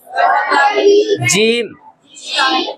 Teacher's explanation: जबान का बीच, हाँ, और ऊपर वाला तालु है इसके साथ